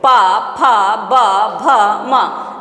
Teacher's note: माने अधर ओष्ठ को स्पर्श कर रहा है। अपना ओठ अपने ओठ को स्पर्श करवाना है। · देखिए ओठ क्या कर रहा है? एक दूसरे को छू रहा है। नीचे वाले पार्ट को हम बोलते हैं अधर और ऊपर को बोलते हैं ओष्ठ। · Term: स्पृष्ट